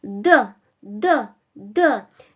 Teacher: pressing the tip of the tongue against your upper teeth, like D, D, D.